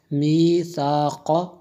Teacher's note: و اذ اخذنا، میم یا زیر می، ثا الف زبر ثا، قاف زبر قا، میثاق، سا کو بھی دبا کے نہیں پڑھتے، اس قاف کو پر پڑھیں گے